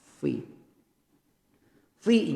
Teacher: bibir bawah bertemu gigi seri atas jangan dibalik perut bibir atas ketemu gigi seri bawah itu terbalik